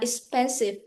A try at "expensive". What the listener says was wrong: Expensive. No, not S. Expensive. expensive.